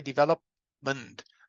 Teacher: I don't say development, I say development. So I don't open the mouth between the P and the M. So this means the P is unreleased.